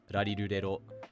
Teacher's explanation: The Japanese r is called a tap, and it's literally the same sound that we make when saying words like ladder or butter in English.